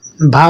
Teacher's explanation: स्पर्श व्यंजन, ओष्ठ्य व्यंजन, महाप्राण व्यंजन तथा घोष व्यंजन